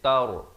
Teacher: Dia baca tar bunyi tar, itu salah. Dia kena baca tar, ra jadi tebal.